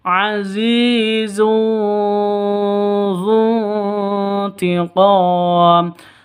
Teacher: itu cara bacanya samar didengungkan siap-siap ke huruf dalalnya Kenapa karena bacaan Ikhfa hiki dengung ya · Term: ikhfa hakiki